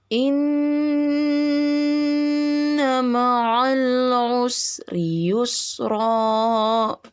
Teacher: perlu diperhatikan juga sama gunah yang di depan itu Inna Ya gunna ditahan tiga harakat